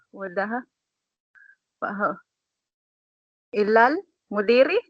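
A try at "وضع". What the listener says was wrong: Hindi, may ba pa. Wadaha ba? Basahin din yung ba.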